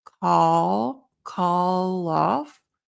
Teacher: we have the L that connects to the O